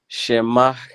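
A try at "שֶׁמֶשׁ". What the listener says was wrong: Careful with that second vowel.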